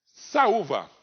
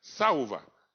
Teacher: Então, saúva é um hiato. Ó. Sa, o A numa sílaba, U na outra sílaba.